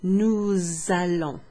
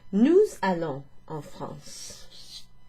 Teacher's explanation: So nous, so you need to recognize that's the verb aller, which means to go, and in the nous form, nous allons. So you'll hear that S pronounced, that little liaison made between the S, which is then followed by the vowel A.